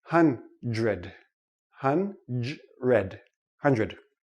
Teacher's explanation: doesn't really sound like dr we don't say hund red okay it's too difficult for the tongue to make the quick switch so this sounds like JR